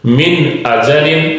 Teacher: نون کو پورا پڑھیں گے، ظاہر کریں گے اس کی آواز کو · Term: اظہار